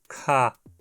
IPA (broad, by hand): kʰ